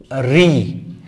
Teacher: রি এর উচ্চারণ স্থান হচ্ছে মূর্ধা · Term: মূর্ধন্য বর্ণ